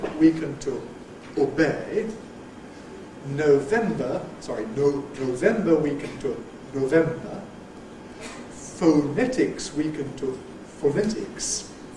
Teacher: When you had O and it got weakened, it tended to weaken to a still rounded vowel. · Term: the allophone O